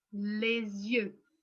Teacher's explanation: So here I've highlighted two things, the S in les, in the article, because it links to the word after. So it makes this like a Z sound